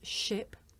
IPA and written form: ʃɪp (ship)